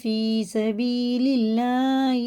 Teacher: اللہ کا لام زیر سے باریک پڑھیں گے، اور یہ یا ساکن ہے، پیچھے زیر ہے، کھڑے زیر کی طرح کھینچ کے پڑھیں گے، اور یہ بھی یا ساکن ہے، پیچھے زیر ہے تو کھڑے زبر زیر کی طرح یہ بھی کھینچ کے پڑھنا۔